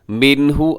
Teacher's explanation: منہ میں نون ساکن کے بعد ہا ہے تو یہاں کیا کریں گے؟ اظہار حلقی، یعنی غنہ نہیں کریں گے۔